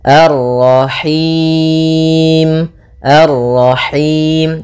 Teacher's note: Nah, ini masuk hidung tapi enggak mau, dia lepas dari yang namanya masuk hidung dan juga lepas dari namanya imalah, yaitu harus kasrah sempurna